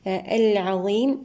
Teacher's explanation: اللام هنا لام قمرية مظهرة. الظاء هنا مفخمة، الياء في حالة الوصل مد طبيعي بمقدار حركتين، وعند الوقف مد عارض للسكون بمقدار حركتين أو 4 أو 6 حركات.